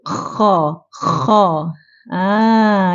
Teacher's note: terangkat jadi istilak bermaksud sebahagian besar lidah terutamanya pangkal lidah terangkat jadi bila kita bunyikan Kha pangkal lidah kita terangkat sebab termasuk dalam huruf istil ya istil kita tak bunyi k